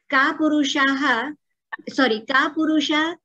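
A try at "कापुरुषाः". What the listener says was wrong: Ka purushaha is only right anyway because it's the word. Visarga is there. Because of visarga, the lopa is there. That's the only thing.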